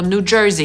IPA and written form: nuː ˈdʒɝːzi (New Jersey)